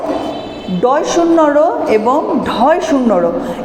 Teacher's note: ডয় শূন্য র এবং ঢয় শূন্য র, এই দুটো ধ্বনি হচ্ছে তারণজাত ধ্বনি